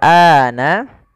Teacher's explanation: a-nya dipanjangkan dua harakat